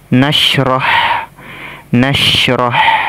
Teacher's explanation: makhraj ha sukun ini ya atau tempat keluarnya suara dari tenggorokan bagian tengah tenggorokan bagian tengah di sini kita baca ya tipis nasrh nasrh